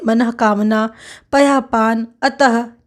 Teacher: उच्चारण ह की तरह होता है विसर्ग का